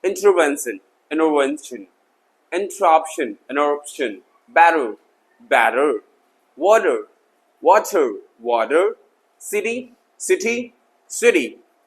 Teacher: टी का अदला बदली होता है जब टी दो वॉल्स के बीच में आता है, रिमेंबर दो वॉल्स के बीच में, सॉफ्ट डी और आर में चेंज हो जाता है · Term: टी फ्लैप